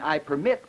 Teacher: in I permit where the primary stress is on the second syllable this turns it into a verb